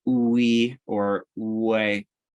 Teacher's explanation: The W is really just an oo vowel to start, that's followed by another vowel sound